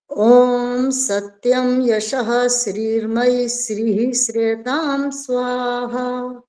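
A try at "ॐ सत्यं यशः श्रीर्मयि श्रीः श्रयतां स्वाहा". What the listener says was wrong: ये तो स करे जा रहे हो श्री श्री ये तो चलेगा ही नहीं बिल्कुल भी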